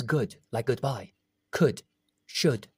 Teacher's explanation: It's in the middle between oo and o